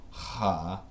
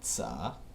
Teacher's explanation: Voiced glottal fricative is now voiceless alveolar sibilant fricative.